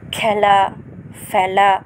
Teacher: ক্রিয়াপদের উচ্চারণের সময় এ উচ্চারণের বিবৃতি হয়